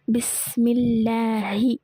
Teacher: அல்லாஹோட லேமுக்கு முன்னாடி கெஸ்ரா இருந்துச்சு அப்படின்னா நம்ம என்ன செய்யணும், தர்கீக் மெல்லினமாக லைட்டாக ஓதணும்